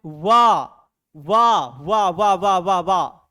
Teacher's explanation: दांत और ओठ दोनों टकरा रहा है बच्चों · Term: दंतोष्ठ